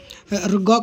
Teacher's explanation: ग का उच्चारण स्थान क्या है तो कंठ